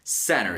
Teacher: American English has that little T a bit softer than British English does